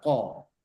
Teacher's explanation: Agak tebalkan huruf ko-nya dan bedakan pada huruf kaf.